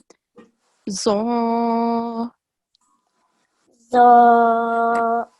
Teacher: to get that thick sound, we are raising the back of our tongue